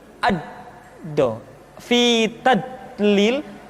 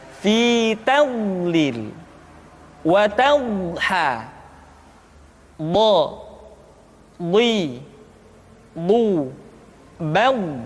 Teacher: sifat al-istitalah, yaitu suara kita memanjang dan terdengar lembut suaranya ketika diucapkan.